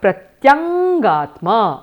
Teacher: Anunasika varnasya dvitvam karaniyam iti. You have to do a doubling of the anunasika sound.